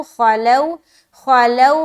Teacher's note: لو میں ہم نرمی کے ساتھ جلد ادا کریں گے کیونکہ سکون والا واو ہے، یعنی کہ واو ساکین ہے اور اس سے پہلے زبر ہے، تو خلو نرمی کے ساتھ ادا کرے، خا کو موٹا رکھیں گے.